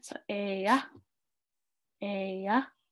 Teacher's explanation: So it has the glottal stop. So you kind of want to stop. It's kind of almost, it's not a silent A, but you're kind of fading your A at the end.